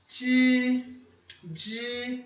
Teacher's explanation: É um J, é um som de DJ, só que com a língua no começo do palato.